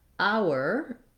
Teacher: hour, as in 1 hour of the day, just begins with the ow vowel